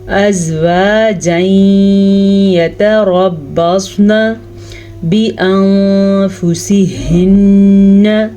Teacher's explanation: را کو اس لیے پر پڑھیں گے کیونکہ را کے اوپر زبر ہے، جبکہ صاد کو اس لیے پر پڑھیں گے کہ صاد ہمیشہ ہی پر پڑھا جاتا ہے۔ نون کو لمبا نہیں کریں گے کیونکہ نون پہ زبر ہے